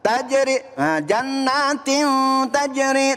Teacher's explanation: Ada tanwin kasroh bertemu dengan huruf ta, maka dibaca ikhfa. Ikhfa di sini kudu dibaca samar ya. Ketika dibaca samar maka tidak boleh dibaca jelas.